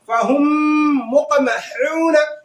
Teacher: फहुम मुक़महून, फहुम मुक़महून, यानी जो है गुन्ना करेंगे, है ना, और जो है इदगाम भी होगा और साथ ही साथ में गुन्ना भी होगा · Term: इदगाम शफवी